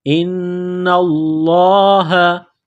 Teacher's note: ہے، بامرہ، ان اللہ، حمزہ کو نون کے ساتھ ملانا ہے، نون مشدد ہے، غنہ کریں گے، آواز ناک میں چھپائیں گے